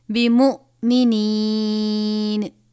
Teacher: یا مدہ ہے، یا مدہ سے پہلے زیر ہے، ایک الف کے برابر پڑھیں گے